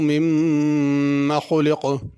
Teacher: خلق میں خا پر پڑھی جائے گی، اور آخر میں جو قاف ہے وہ بھی پر پڑھا جائے گا۔